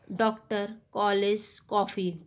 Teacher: यह आ और ओ इन दोनों का बीच का उच्चारण है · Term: आगत स्वर